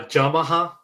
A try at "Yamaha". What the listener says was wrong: It sounded like you said Jama instead of Yama. I understand it's a pronunciation thing, but it sounded like you said Yamaha. Yamaha. Yeah, it's Ya, not Ja. It's YA, like Ya.